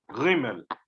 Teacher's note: And when in the Dutch community, the Gimel without dagesh has a very guttural sound